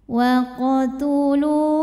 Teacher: mim sukunnya ini kita bunyikan dengan m jelas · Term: izhar syafawi